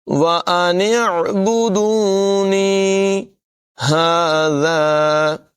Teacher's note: ذال میں سیٹی کی آواز نہیں نکالیں گے